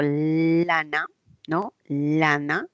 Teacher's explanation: porque la lengua se pega al momento de producir una l la lengua el lápice queda pegado en la zona del alveolo porque una l es alveolar lana y por los costados va saliendo el aire si digo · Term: lateral